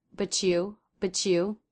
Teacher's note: You might hear a CH sound happening between but and you